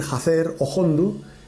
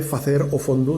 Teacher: ese sonido glotal que consiste en decir jacer o hondo en cuenta de facer o fondo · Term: H aspirada